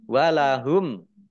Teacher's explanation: Walahum mim sukun bertemu dengan huruf ain idhar safawi dibaca jelas.